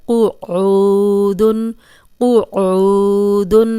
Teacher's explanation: اب دیکھیں یہ قوف موٹا ہے تو موٹا ہی پڑھیں گے، آگے عین پہ پیش اور جزم والی واو ہے، یہ واو مدہ ہے، اس کو 2 حرکات لمبا کریں گے اور قوف کو موٹا پڑھیں گے۔